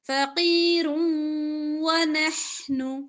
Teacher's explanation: دو پیش کو واو کے ساتھ ملا کر ادغام کریں گے گننے کے ساتھ